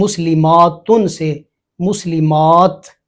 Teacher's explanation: آخر میں لمبی تا ہو، وقف میں تا ہی پڑی جائے گی، تا ساکن، اور گول ہو تو وقف میں ہا اور وصل میں وہ تا پڑی جائے گی۔